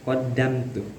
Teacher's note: ada izhar syafawi karena ada mim mati menghadapi huruf ta. Cara bacaannya itu tidak boleh didengungkan. Qaddamtu jadi harus jelas.